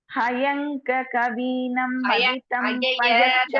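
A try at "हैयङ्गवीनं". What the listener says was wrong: First வேர்டே தப்பா வருதுப்பா. ஹய இல்ல ஹைய.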